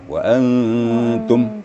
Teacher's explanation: Jadi lidah kita langsung ditempatkan pada makhraj ta. Tapi disengaukan. Maka jadilah samar. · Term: Ikhfanya